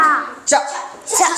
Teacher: చ చ అంటే కూడా గాలి రావద్దు